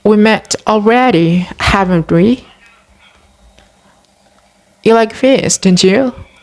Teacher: raising intonation in questions tags as real questions